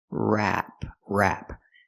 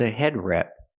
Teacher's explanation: we use the a sound like black cat it's more open